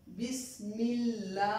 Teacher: We have Zer below the Mim before the Lam of Allah. We will pronounce the word Allah as thin